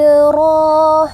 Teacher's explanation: ro itu tafkim ya karena dia berbaris atas